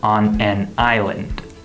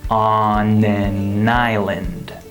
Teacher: When a word ends with a consonant and the next word starts with a vowel, we move that final consonant from the end of the first word to the beginning of the next word. This is called “linking”. · The final “n” of the word “on” links to the “a” of the word “an”